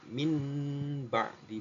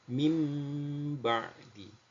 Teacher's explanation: merubah nun sukun menjadi mim